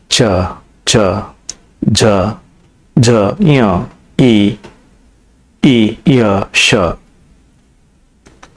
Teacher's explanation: ತಾಲ್ಯವ್ಯ ಅಕ್ಷರಗಳು ತಾಲುವಿನ ದವಡೆಯ ಸಹಾಯದಿಂದ ಹುಟ್ಟುತ್ತವೆ